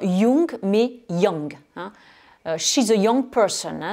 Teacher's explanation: Ce OU, on le prononce avec le son schwa, ce son qui fait plutôt E et surtout pas OU.